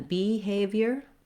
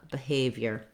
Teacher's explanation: Secondly, the letters BE say an I or an vowel in this word because it's a reduced first unstressed syllable. The stress and the length, the clear vowel is on the A in the second syllable.